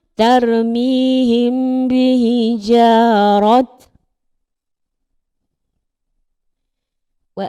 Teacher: Cara bacaannya adalah menyembunyikan bunyi mim serta dengun. Bila kita baca tak berbunyi huruf mim tersebut. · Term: ikhfa syafawi